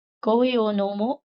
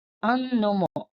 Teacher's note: Sangbang, conversation in the plain style. Questions in the plain style generally omit the particle ka, which denotes a question, and end with a rising intonation such as nomo.